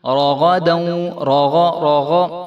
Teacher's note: را بھی موٹا حرف ہے اور غین بھی موٹا حرف ہے، تو ان دونوں کو جو ہے خوب موٹا کر کے پڑھیں گے. رَغَدًا وَدْ، وَدْ اور آگے جو ہے دال کے اوپر قلقلہ ہو رہا ہے.